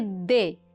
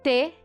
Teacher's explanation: Elas são oclusivas, são alveolares, mas uma é vozeada, D, e outra não é vozeada, T.